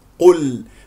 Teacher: الله ماذا طبعا القاف القاف القاف مفخمه اللام مرققه قل قل والتفخيم القاف مرتبه ثالثه مضموم